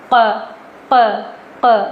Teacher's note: قوف کی آواز میں کھٹکا ہوتا ہے. اسے ہم کل نہیں پڑھتے ہیں، چھوٹا کاف ادا نہیں کرنا ہے. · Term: بڑا والا قوف